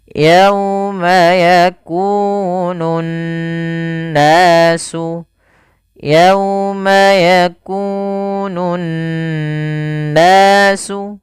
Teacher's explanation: Cara membacanya adalah menahan suara n ya sepanjang 2 harokat. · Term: gunnah